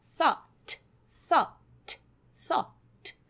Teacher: O GH, ele não tem som aqui nessa frase, nessa palavra